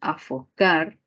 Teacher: luego tenemos a focar se pare silábica a o car y la mayor fuerza de voz al final lo que nos daría una palabra aguda